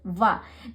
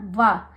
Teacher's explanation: तो इसका जो उच्चारण स्थान है वो दंतोष्ठव है, यानी कि दांत और ओठ, वाह। जब हम वाह बोलते हैं, आप भी बोलने का प्रयास कीजिए, तो आपका जो दांत है वो आपके होठ पर लगता है ना